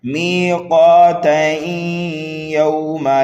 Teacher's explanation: تو ہمیں ملا کر اس طرح پڑھنا ہے، میقاتین یوما، میقاتین یوما، تنوین کے بعد میں یا آ رہا ہے یرملون میں سے، تو یہاں پر ہوگا ادغام، تا کو ہم ملا دیں گے یا میں